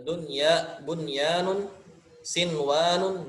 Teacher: Tidak didengungkan walaupun ini idgham bigunnah, tapi tidak didengungkan gitu kan.